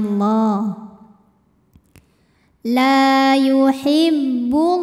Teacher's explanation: lam jalalah dibunyikan secara tafkhim sebab huruf sebelumnya berbaris damah maka cara bacanya ditebalkan pangkal lidah dinaikkan bunyinya